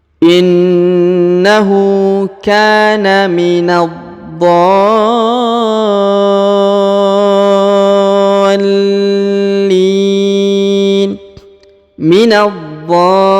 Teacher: Huruf na langsung ke huruf dho, lalu ditahan dan ditekan 2 harokat. Setelah itu dipanjangkan 6 harokat ya, karena di atasnya terdapat tanda tasdid.